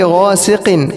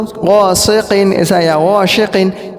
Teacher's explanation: قاف پورے اس کے آگے سین جو ہے وہ باریک ہے ، تو کچھ لوگ اس کو غاسقٍ ایسا یا غاشقٍ ایسا